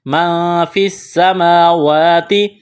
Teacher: نون ساکن کے بعد فا ہے، حروف اخفا ہے، یہاں غنہ کریں گے، آواز ناک میں چھپائیں گے ۔ ما فی السماوات، فا کو سین کے ساتھ ملانا ہے،